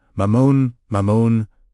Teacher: The first syllable, ma, is short and grounded. The second syllable, mon, is elongated and resonant. Feel it vibrating in your chest, in your solar plexus.